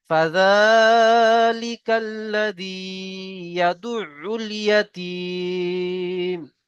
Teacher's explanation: এখানেও দেখেন আরজি অকফি এসছে, মাদ্দে আরজি অকফি, হুরুফে মাদের পরে এখানে আমরা থামছি, তাই 3 থেকে 4 পরিমাণ টান